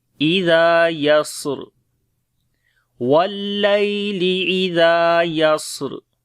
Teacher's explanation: نرم پڑھیں گے، الف مدہ ہے لمبا کریں گے، واللیل اذا، سین کے اوپر صفت ہمس اور صفت صفیر دونوں ہوں گی اور را کو موٹا پڑھیں گے جب رکیں گے